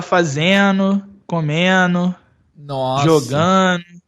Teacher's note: no Rio de Janeiro, eu vejo mais esse... NDO, ele tira o D